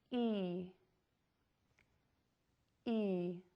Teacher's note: To make this long, static vowel sound, your lips are pulled back into a smile and they're very tense. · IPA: /i/